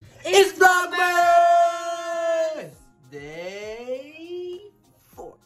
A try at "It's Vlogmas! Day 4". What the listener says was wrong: You're not supposed to put a pause in it. No, it's not a pause. It's not a pause.